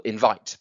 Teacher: Now, invite is an example of an iamb. It has a an unstressed and then a stressed syllable